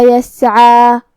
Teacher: کلمت یسعا میں یہاں حرف العین کو ہم حلق کے درمیان والے حصے سے ادا کریں گے. آخری میں مد طبیعی ہے، تو دو حرف کے برابر اپنی آواز لمبی کریں گے